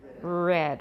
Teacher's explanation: a voiced alveolar approximant from American English